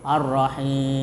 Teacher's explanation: Ya, panjangnya enam harakat, enam ketukan. · Pertama, dibaca panjang ya, tiga alif atau enam harakah atau panjangnya seperti mad wajib muttasil. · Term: mad arid lukun